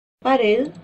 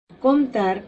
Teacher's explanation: todas ellas llevan la mayor fuerza de voz en la última sílaba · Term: palabras agudas